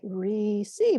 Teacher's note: We need an unstressed syllable and then a stressed syllable.